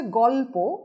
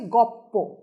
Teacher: যেমন শব্দটা হচ্ছে গল্প, সেখান থেকে সমীভবন হয়ে দাঁড়িয়েছে গপ্প, অর্থাৎ ছিল ল এবং প দুটো আলাদা ব্যঞ্জন ধ্বনি, সেটা হয়ে দাঁড়ালো সমীভূত হয়ে একই ব্যঞ্জন ধ্বনি প, তাই পয়ে পয়ে।